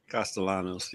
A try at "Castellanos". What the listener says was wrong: I think the L is silent.